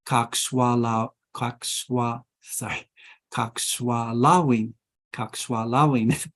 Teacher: The accent comes on the penultimate syllable, typically in this language. The penultimate syllable is the second to the last syllable.